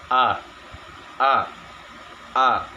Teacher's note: Kemudian yang ke-28 huruf a. Huruf a atau hamzah makhrajnya atau tempat keluarnya huruf yaitu di tenggorokan yang paling dalam.